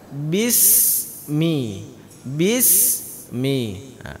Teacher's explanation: mimitu keluar dari kedua bibir kita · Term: huruf mim